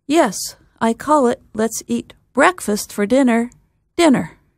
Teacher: In this sentence, the two words that get extra stress are breakfast and the second, dinner